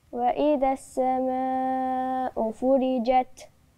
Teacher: وانا عندي هنا المد اربع حركات